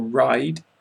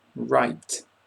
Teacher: with the t i am making a sharper breath there is a stronger breath